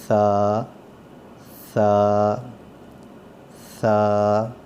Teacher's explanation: تو یہ جب اوپر سے دانت اس کو لگیں گے, سا دانت اس کے اوپر رکھیں اور پھر ادا کریں, تو یہ نرم آواز آئے گی اس کی. اس کو تیز سیٹی کی طرح نہیں پڑھنا, زبان باہر نکال کے دانتوں کے ساتھ لگا کے اور نرم کر کے پڑھنا ہے